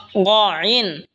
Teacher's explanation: গইন হলকের শেষ ভাগ হয়তো উচ্চারণ হবে গইন, গইন। এই খ যেখান থেকে উচ্চারণ হয়েছে সেখান থেকেই গইনও উচ্চারণ হবে।